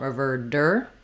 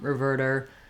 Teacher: our T becomes a flap which sounds a little more like a D